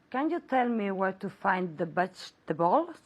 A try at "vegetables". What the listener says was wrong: Very good, but pronounce the V more.